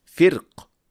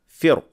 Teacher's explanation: The word firq is pronounced with heavy ra in Al-Fil, but in Ash-Shatibiyyah it can be pronounced with light ra, firq, or with a heavy ra, firq